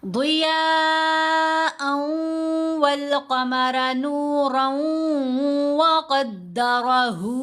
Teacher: तो दोनों पर हमने करना है इदगाम। इदगाम करते हुए नून की आवाज़ मर्ज हो जाएगी मुशद्दद हरफ के अंदर